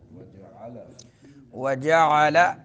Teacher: عین درمیان حلق سے